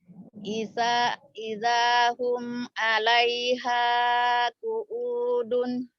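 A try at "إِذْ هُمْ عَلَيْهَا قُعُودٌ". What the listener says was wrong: Bukan ida, dalnya mati id. Id hum. Idhum alaiha qu'udun.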